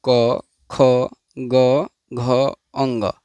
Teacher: इन सभी का उच्चारण स्थान कंठ है, अतः इन्हें कंठ वर्ण कहते हैं।